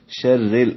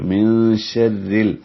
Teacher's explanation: را کے نیچے زیر آئی ہے اس لیے را باریک ہے